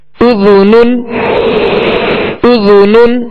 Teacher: ذال کو نرمی کے ساتھ ادا کریں گے، اس میں سیٹی کی آواز پیدا نہ ہو